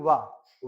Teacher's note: और हम देखते हैं कि वा, वा जो होता है, ये दंत और ओष्ठ से मिला के बोला जाता है, दंत ओष्ठ को इसके मिलाने से क्या होता है, उच्चारण होता है वा का, ठीक है, दंत और ओष्ठ की सहायता से।